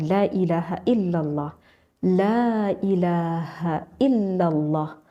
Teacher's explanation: tidak ada makhraj yang keluar dari famun yang keluar dari kedua bibir kita tetapi makhrajnya itu banyak yang keluar dari lidah dan juga dari tenggorokan sehingga meskipun mulut tidak keluar tetapi ini lidah kita masih bisa